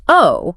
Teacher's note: When you say it with a slight upward inflection, oh, it instantly signals I'm processing new information. Right. If I say oh flatly, it just means I understand.